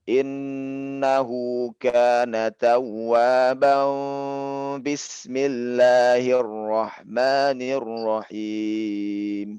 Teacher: Dia mengganti nun jadi mim. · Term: iklab